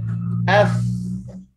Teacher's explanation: pangkal lidah terletak, dia tidak terangkat sebab dia huruf nipis. Akan mengalir suara, akan mengalir angin, dan hujung lidah juga kita mendatar. Okay, lidah kita relax sahaja.